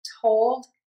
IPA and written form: toʊld (TOLD)